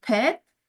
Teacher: Stop or plosive, the definition is when the lower and upper lips completely block the flow of air from the lungs. That closure may then be released and produce a sudden outflow of air.